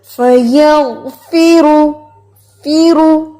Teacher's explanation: غین کو ہلانا بھی نہیں اور غین کو ہم نے پر بھی کرنا ہے، اور اس کا جو را ہے اس کو بھی موٹا کرنا ہے. فیغفرو، فیرو، فی باریک ہے، رو موٹا.